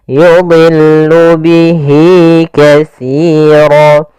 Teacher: dha di sini huruf isti'la termasuk huruf tafkhim, maka dia tetap ditebalkan, bukan yudillu tapi yudillu, kemudian lamnya tipis.